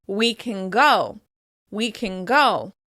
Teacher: we may slightly adjust the /n/ sound into the /ng/ sound instead